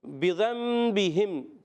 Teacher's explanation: نون ساکن تنوین کو میم سے بدل کر پڑھتے ہیں، اس کو اقلاب کہتے ہیں، ٹھیک ہے؟